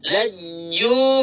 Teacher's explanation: Jim dibacakan selama dua harakat, mengapa? Karena ada dammah diikuti sukun wau, lihat. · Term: mad thabi'i